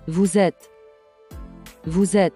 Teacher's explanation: This is because of liaison, where the last letter of vous, which is S, is linked and pronounced with the first letter E of the next word to make the Z sound.